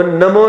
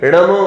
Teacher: न बोलने पर जीभ पर किसी प्रकार का खिंचाव नहीं आता, सरलता से बोल सकते हैं न को।